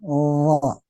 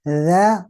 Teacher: Bedanya hanya sifat, yaitu huruf wo pangkal lidah diangkat, huruf za tidak diangkat.